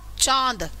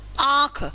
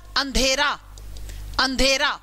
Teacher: हवा नाक के रास्ते से भी बाहर आएगी और मुख के रास्ते से भी बाहर आएगी, नाक से भी आएगी और मुंह से भी आएगी, दोनों के रास्ते से हवा बाहर आएगी, कुछ कुछ नाक से और कुछ कुछ मुंह से, ठीक है। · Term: अनुनासिक